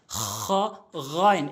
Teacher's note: খ এবং গইন এই দুইটি হরফ হলকের শেষ থেকে